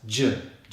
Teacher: starts with the /dʒ/ voiced consonant sound as in joy